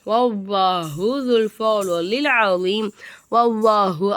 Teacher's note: அவ்வாங்கிற வார்த்தைக்கு முன்னாடி எழுத்துக்கு வந்து ஜபர் வந்த காரணத்தினால அவ்வாஹுங்கிற வார்த்தையை நல்லா வாய் நிறைய காத்து வச்சு உச்சரிக்கணும்